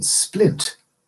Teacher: the P in splint does not cause a blast of air because